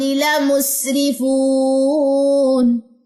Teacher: اس کو لا مسرفون نہیں پڑھنا، لام کی زبر اکثر لوگ جو ہے نا وہ لمبی کر دیتے ہیں